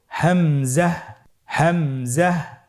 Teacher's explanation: হামজা হরফটি উচ্চারণ ক্ষেত্রে বারিক করে উচ্চারণ করতে হবে এবং এখানে টেনে পড়া যাবে না, দ্রুত পড়তে হবে।